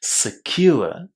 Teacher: there's a very strong stress on the second syllable here